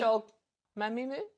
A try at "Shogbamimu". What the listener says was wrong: You just missed the B. Try again. Go on. Now read it phonetically.